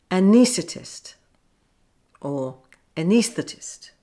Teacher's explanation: Some people may say it so quickly you can barely hear the th sound